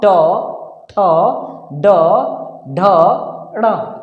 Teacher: जब हम बोलते हैं तो हमारा जुबान मूर्धा में टच करता है, ऐसे ये सामने वाला तालु है, उसके पीछे वाला मूर्धा है, मूर्धा में टच करता है, तब इन सभी वर्णों का उच्चारण होता है, यानी टवर्ग वाले वर्णों का उच्चारण होता है।